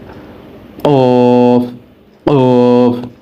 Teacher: قاف، زبان کی جڑ کا آخر جو کوے کے پاس ہے، جب اوپر کے تالو سے لگے تب یہ لفظ پڑھا جائے گا۔ قاف، قاف، یعنی کہ زبان کا آخری حصہ اوپر تالو میں لگانا ہے اور یہ لفظ موٹا کر کے پڑھنا ہے۔